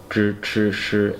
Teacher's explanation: For these ones, zhi, chi, shi, your tongue's curled up. Zhi, chi, shi, and touching about here.